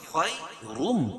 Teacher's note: تنوین کے بعد ادغام مع الغنہ کے 4 حرفوں میں سے میم ہے تو یہاں غنہ کر کے پڑھیں گے